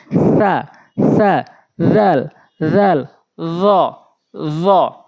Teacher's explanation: এই ৩টি হরফ জিহ্বার আগা দাঁতের আগা, জিহ্বার আগা সামনে দাঁতের আগা নরম করে